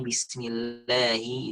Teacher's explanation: ini rahang kurang ditarik ke bawah sehingga bunyi kasrohnya kurang tipis · Kalau ini bismillahi itu kurang turun rahangnya, kurang tipis kasrohnya